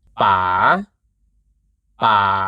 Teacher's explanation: the rising tone start low, then rises slightly at the end.